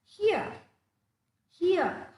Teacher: it becomes ear look at the example there it is here the r is is not to be pronounced okay the letter R is not to be pronounced